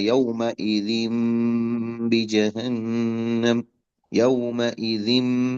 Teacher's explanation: وہ میم جو ہے نا، وہ میم میم اصل میں چھوٹا میم لکھا جاتا پہچان کے لیے اقلاب کی، کہ با یہاں پر نہیں پڑھا جائے گا بلکہ میم پڑھا جاتا ہے